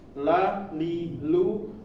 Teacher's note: huruf lam ini mau harokatnya fathah, dhammah atau kasroh, la, li, lu, itu bacaannya tipis, jangan dibaca tebal